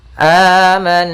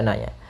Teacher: gunah pada huruf nun yang berharakat tasdid maka cara membacanya yaitu ditahan dulu suara gunahnya sepanjang du harakat am kemudian baru dibaca nanya Kemudian pada lafal na ada fathah